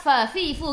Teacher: Fa fi fu gigi atas menyentuh perut bibir bawah.